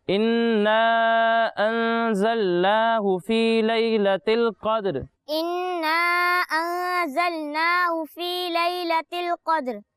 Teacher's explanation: غنہ کریں گے اور غنہ کی مقدار ایک الف کے برابر ہے